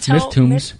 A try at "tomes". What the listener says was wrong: tomes. Tomes. It's not a tomb, it's a tome.